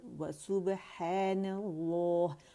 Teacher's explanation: واو بھی باریک ہے اور سین پہ رولنگ ہے اور با پہ قلقلہ ہے